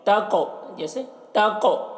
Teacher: تقوی قاف میں قلقلہ کریں گے اور قاف کو پر پڑھیں گے، قلقلہ یعنی آواز ٹکرائے گی قاف میں